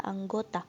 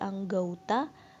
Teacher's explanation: Perubahan bunyi ini terjadi pada bunyi vokal tunggal o ke vokal rangkap au. Hal ini terjadi karena adanya upaya analogi penutur dalam rangka pemurnian bunyi pada kata tersebut. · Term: Diftongisasi